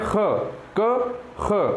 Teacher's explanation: ख जब हम बोलते हैं तो हमारे अंदर से अधिक ऊर्जा लानी पड़ती है, हमें अधिक सांस जो है वो बाहर फेंकनी पड़ती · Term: महाप्राण